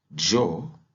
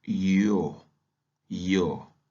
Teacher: on peut dire jo avec vibrations des cordes vocales ou bien on peut dire yo yo sans libération de cordes